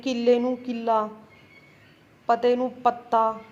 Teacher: ਪੋਠੋਹਾਰੀ ਦੇ ਵਿਚ ਅੱਧਕ ਲਾ ਕੇ ਦੋਹਰਾ ਅੱਖਰ ਬੋਲਣ ਦੀ ਬਹੁਤ ਜਿਆਦਾ ਰੁਚੀ ਆ